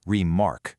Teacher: We start weak and just land super hard on the second syllable, remark. That heavy landing beat, that is word stress in action.